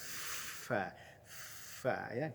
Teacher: Fa-nya ada hamas, ada nafas yang mengalir.